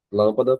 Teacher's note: Então, a antepenúltima sílaba acentuada, nós temos uma palavra que é proparoxítona, sem dúvida.